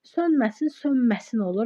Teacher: Sönməsin, sönməsin olur. N-mıya çevrilir.